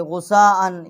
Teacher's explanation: یہ بڑی مد ہے اس کی آواز جو ہے ہم نے 5 الف جتنا جو ہے وہ بلند کی ہے